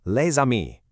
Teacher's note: The S at the end of lay is normally totally silent, but because ami starts with a vowel, that S activates and makes a Z sound, linking the 2 words perfectly. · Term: mandatory liaison